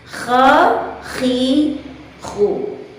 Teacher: Beratnya huruf kha dilafazkan itu disebabkan oleh karena tempat keluarnya, yaitu tenggorokan bagian atas, bagian tenggorokan yang masih jauh dari ujung lidah kita atau yang masih jauh dari permukaan kedua bibir kita, sehingga menyebabkan huruf kha dilafazkan dengan suara yang berat. · Contoh, kha tidak dengan kho, tidak dengan menghimpit pita suara, tidak dengan menutup pita suara, sehingga kha terlafazkan dengan jelas. Kha, khi, khu.